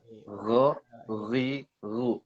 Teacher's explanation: Ghain ini ada di ujung tenggorokan.